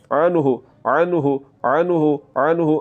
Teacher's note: عین کی آواز جو ہے وہ حلق کے درمیان والے حصے سے نکلتی ہے۔ عین اور حمزہ یہ دو حروف ایسے ہیں جن کی آوازیں آپس میں ایک دوسرے کے ساتھ ملتی ہے، تو عین کی آواز کو آپ نے حلق کے درمیان والے حصے سے نکالتے ہوئے اس کو پڑھنا ہے، عنہ عنہ عنہ عنہ۔